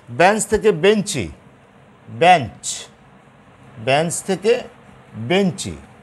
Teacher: প্রত্যেকটা জায়গাতে তোমার স্বরধ্বনি, একটা অতিরিক্ত স্বরধ্বনি আসছে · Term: অন্তঃস্বরাগম